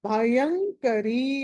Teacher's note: య తర్వాత అనుస్వారం ఉంది తర్వాత క ఉంది కాబట్టి పంచమాక్షరం వస్తుంది